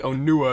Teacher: So like Onua, there's more stress on the U.